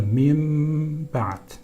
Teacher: Burada iklap olur. Nun efendim biraz sıfatlarını geriye çeker. Mime dönüşür.